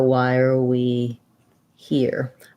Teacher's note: are we that links a little bit as well and then here is where we have our length that's the stress in that phrase so why are we here um i can rewrite here this